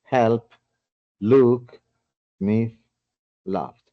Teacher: Si decimos el verbo solamente help, y me gustaría que cada uno lo haga mientras lo estoy diciendo, help, y colocan su manito aquí, help implica que no hay ninguna vibración. Es voiceless, decimos voiceless o no vibration.